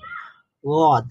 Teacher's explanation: জিহ্বার দুই পার্শ্ব অথবা যে কোনো একটা পার্শ্ব আমরা উপরের মাড়ির দাঁতের গোড়ার সঙ্গে লাগাবো, লাগিয়ে যে সাউন্ডটা প্রডিউস হবে সেটাই আমাদের দদের সাউন্ড